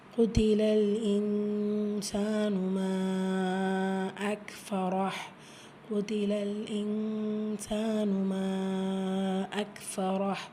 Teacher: இஃபாவுடைய சட்டம் நூனை பாதியாக மறைச்சி குன்னா செஞ்சு ஓதணும்.